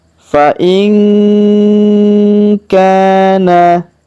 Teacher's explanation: huruf nun sukun bertemu ka, maka kita dengungkan dan kita samarkan cara bacanya. Fa in kana, huruf ka kita panjangkan 2 harokat karena alif di depannya.